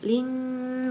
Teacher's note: ada kasratain bertemu dengan kaf jadi samar ke huruf kaf. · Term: ikhfa hakiki